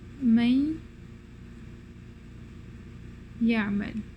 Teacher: Okay, naqis means incomplete, so this is incomplete merging. So the noon merges into the ya or the waw, but not in a complete fashion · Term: idgham naqis